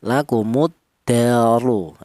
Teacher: Cara menebalkan huruf ra yang berharakat dhammah ini menggunakan lidah bagian belakang diangkat ke atas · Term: tafkhim